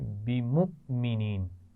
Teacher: بمؤمنین میں آپ دیکھ رہے ہیں حمزہ ساکن ہے، جس کی وجہ سے ہم جھٹکے سے پڑھ رہے ہیں